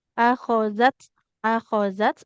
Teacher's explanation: Nah, akhozat, akhozat. Nah, huruf zalnya jangan jadi da, jangan akhodat.